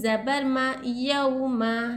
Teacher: वाव साकिन से पहले हरकत ज़बर रहा तो वाउलिन होता, वाउलिन को ज़र्रा भी नहीं खींचना चाहिए